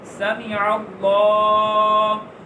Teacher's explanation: سین زبر سا میم زبر می سامع عین زبر سامع. تو لفظ اللہ کے لام سے پہلے پھر زبر آ گئی تو اس کو موٹا پڑھیں گے. عین زبر لام عل سامع سامع.